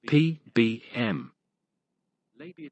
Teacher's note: bilabial sounds produced with both lips